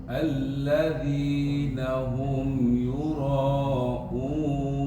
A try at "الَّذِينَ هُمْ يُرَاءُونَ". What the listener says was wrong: masih kurang 6 harokat. Yurauna.